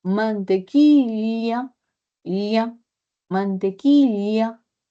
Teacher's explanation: en vez de utilizar la lateral palatal de la doble L, utiliza la y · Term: Yísmo